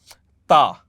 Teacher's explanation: जैसे let's suppose I have to से, जैसे मुझे बोलना है ता, ता जो अरबिक जो ता होता है, तो ता बोलने के लिए माई tip of the tongue should touch the back of my incisors, ये पीछे वाली इंसाइजर्स को टच करेगी तो तब ये वर्ड प्रोनाउंस होगा।